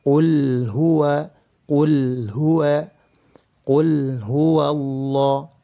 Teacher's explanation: Setiap lam sukun yang terdapat pada fiil, baik itu fiil madhi maupun fiil amr, apabila bertemu dengan seluruh huruf hijaiyah kecuali lam dan ra, maka harus dibaca dengan cara izhar. Harus dibaca dengan cara izhar atau dijelaskan. Lam sukunnya harus jelas.